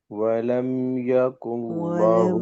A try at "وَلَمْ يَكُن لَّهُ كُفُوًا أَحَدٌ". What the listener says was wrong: کے لام کے علاوہ سب لام باریک ہیں آپ ادھر ولم يكن ایک آدمی نے آپ میں سے ایک نے موٹا پڑھ دیا ہے موٹا نہیں پڑھنا لام کو ولم يكن له كفوا أحد یہ یاد رکھو لفظ صرف اللہ کا لام موٹا ہونا ہے بس اللہ کا لام باریک باقی سب لام باریک ہے اللہ کا لام